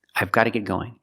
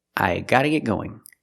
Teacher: in America it's more common not to pronounce the V sound in I and just say I gotta well technically you can